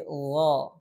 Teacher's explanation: makhrajnya selanjutnya sering juga disebut Gaha Ga bukan ga tapi gho ada bunyi tebal karena pangkal lidahnya terangkat yaitu sifat istila pada huruf gain jadi tidak ada istilah Gaha